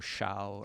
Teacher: Your tongue is like curled back in your mouth. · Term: retroflex